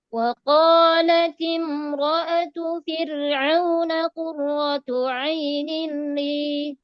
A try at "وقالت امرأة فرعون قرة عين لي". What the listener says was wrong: di huruf ro saja satu ya. Nah, huruf ro tebal. Ini mungkin karena terbiasa tebal Bu ya. Iya, jadi kita usahakan fir, jangan firl.